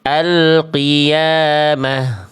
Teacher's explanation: Kalau misalnya kita berhenti pada ta marbutah, dia dibaca jadi h besar. H besarnya sukun alqiyamah.